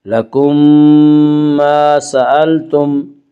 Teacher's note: میم ساکن کے بعد اگر دوسری میم آئے تو وہاں پہ ادغام شفوی ہوگا